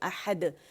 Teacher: تو یہاں دیکھیں ساکن ہو گیا. احد تو دال پہ ہم نے قلقلہ کیا